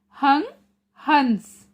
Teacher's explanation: अंग का उच्चारण करते समय हवा केवल नाक से बाहर निकलती है